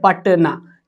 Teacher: यहां पे टी के बाद अ का उच्चारण नहीं है इसलिए एन और सीधा ए पटना।